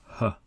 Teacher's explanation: The articulation is the deepest inside the throat.